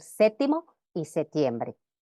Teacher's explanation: solo es normal omitir la p en séptimo y septiembre